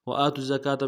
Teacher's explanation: حمزہ کے اوپر کھڑا زبر ہے، ایک مقدار میں کھینچیں گے، تا کو زا کے ساتھ ملانا ہے، زا کے اوپر تشدید زور دیں گے